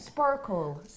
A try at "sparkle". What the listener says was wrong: No, you can't do it. Sparkle. It's the R. Think of farmer. R. Sparkle.